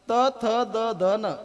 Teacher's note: त म्हणत असताना जिभेचा शेंडा दाताच्या मागच्या बाजूला लागतो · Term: दंत्य वर्ण